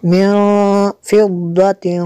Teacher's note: نون ساکن کے بعد فا حروف اخفاء میں سے، یہاں پہ اخفاء ہوگا، اس لیے یہاں پہ غنہ کریں گے۔